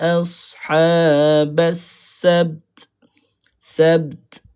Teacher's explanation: Okey huruf ba ni kena qalqalah.